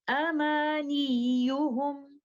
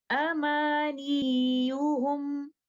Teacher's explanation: I should not be stretching or lengthening letter ya, because ya here is not in a mad condition. That's the reason I will do nabar here.